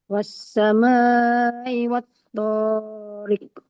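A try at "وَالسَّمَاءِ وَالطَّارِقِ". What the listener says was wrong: Oke, pokoknya jangan terlalu panjang. Wassama, Umi panjangkan lagi. Itu 4 harokat. Pokoknya seayun saja. Qafnya pantulannya bukan riqo. Riqo.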